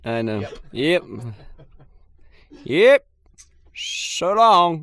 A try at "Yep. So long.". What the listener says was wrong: Longer on that yep. Yep.